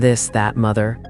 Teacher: Your vocal cords don't vibrate. Voiced th as in this that mother. Your vocal cords vibrate.